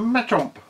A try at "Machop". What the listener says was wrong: That says Machop, not Machomp. Where's no M in there? It's Machop, not Machomp.